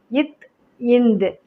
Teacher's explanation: இட் இன் நாவின் நுனி அன்னத்தின் நுனி. இத் இந்த் நாவின் நுனி மேல்வாய் பல்லின் அடி